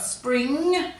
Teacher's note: So here we've got spring with the ing, but we're just focusing mainly on that ng at the end. It's quite a nasally sound